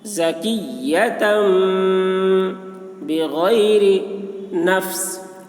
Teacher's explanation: تا کو میم کے ساتھ ملا کر پڑھیں گے